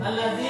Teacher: Cara membacanya adalah memasukkan huruf lam ke huruf dal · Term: lam syamsiah